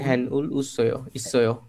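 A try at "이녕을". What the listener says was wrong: হ্যাং আসতেছে কেন, ইনিয়ং উল।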